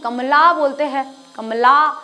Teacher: जो ल बोला था वो थोड़ा सा ज्यादा खींच गया तो वो क्या हो गया है आ की मात्रा हो गई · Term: दीर्घ